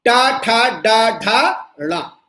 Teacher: इनमें जीभ जाके मूर्धा से टच होती है और इसीलिए मूर्धा पर आके हवा रुकती है। इसलिए टवर्ग का उच्चारण मूर्धा के स्थान पर उच्चरित होता है।